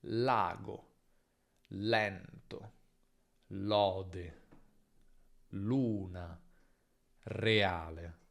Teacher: L è una consonante alveolare, laterale, sonora. La punta della lingua tocca gli alveoli come N e R, ma l'aria esce lateralmente. Le corde vocali vibrano. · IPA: /L/